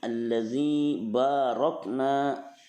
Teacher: zi-nya matobi'i, zi panjang 2 harokat, ada ya sukun sesudah kasroh